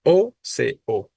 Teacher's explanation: la sílaba tónica es la primera